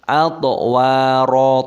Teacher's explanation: toknya sukun diqalqalah dipantulkan suaranya.